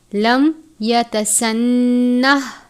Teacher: میم ساکن کے بعد یا ہے، اظہار شفوی کا قاعدہ لگتا ہے، یعنی میم ساکن پر غنہ نہیں کرتے